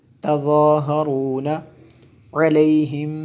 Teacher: میم ساکن کے بعد با ہے اس لیے یہاں پہ اخفاء شفوی ہے